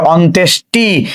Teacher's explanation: এবার দেখো মূর্ধন্য স এর সঙ্গে ট যুক্ত আছে। আমরা জানি উচ্চারণে মূর্ধন্য স উচ্চারণ হয় না, উচ্চারণ হয় কি তালব্য স